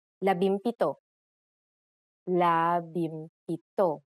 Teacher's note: If a P follows the NG connector, the NG becomes an M, just like in labimpito.